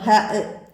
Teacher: ഹ തൊണ്ടയുടെ മധ്യം, ഇവിടെ നിന്ന് കാറ്റോടുകൂടി പുറപ്പെടുന്നു ഹ.